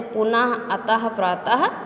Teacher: जिस वर्ण का उच्चारण हल्के हा के समान होता है उसे विसर्ग कहा जाता है